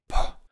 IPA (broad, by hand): p